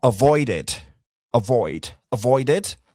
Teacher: ça se prononce pas littéralement un E. C'est un son qui se trouve entre le I et le E. Donc, ça donne E.